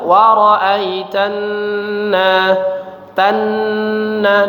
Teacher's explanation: nun bertasydid kita dengungkan, ditahan ya